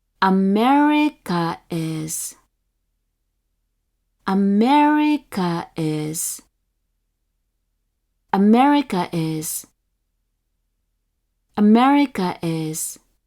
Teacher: another pronunciation with the downstep on the third mora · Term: nakataka